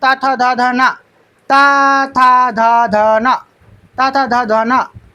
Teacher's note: इनका उच्चारण जीभ के अग्र भाग और दांतों के स्पर्श से होता है। · त थ ध न दांत व्यंजन है